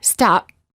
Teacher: the lips stay closed no air comes out this creates almost a silent version of the sound p or a half p we know the p is there but